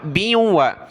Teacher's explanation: با کو واو کے ساتھ ملائیں گے، ناک میں آواز پیدا کریں گے، با واو دو زیر، بیوں، واو زبر و، بیوں و۔